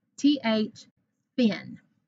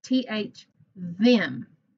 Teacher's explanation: They're spelled the same. They're both spelled with TH, but one is unvoiced and one is voiced. This one, th, thin, like a thin person, or th, them is voiced. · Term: sister sounds